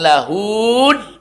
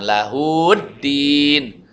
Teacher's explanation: Hak domirnya jadi pendek, tidak jadi mad. Karena dimasukkan ke dalam huruf lain.